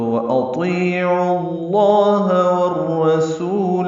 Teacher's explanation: والرسول میں واو کو را سے ملائیں گے، را پر پڑھیں گے